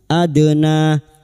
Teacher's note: dal sukun yang mati asli di tengah kalimat qalqalah sugro. Jangan lupa dipantulkan.